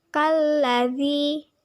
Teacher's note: Cara membacanya, alif lam dimasukkan ke huruf lam. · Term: alif lam samsiah